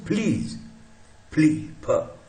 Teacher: प का एस्पिरेटेड, जोर से हवा निकाली मुंह से तो एस्पिरेट हो गया